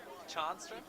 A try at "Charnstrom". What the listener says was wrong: There's an R there, but it sounds